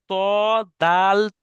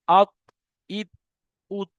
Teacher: অর্থাৎ 11 নম্বর মাখরাজ জিভের আগা এবং সামনের উপরের দুই দাঁতের গোড়ার সাথে লাগিয়ে উচ্চারিত হয়